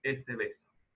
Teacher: Esta B en posición intervocálica es aproximante